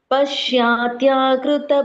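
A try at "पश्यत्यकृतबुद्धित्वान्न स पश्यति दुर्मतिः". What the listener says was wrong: ಪಶ್ಚಾತ್ಯ ಅಂತ ಹೇಳಬೇಡಿ ಪಶ್ತ್ಯ ದೀರ್ಘ ಇಲ್ಲ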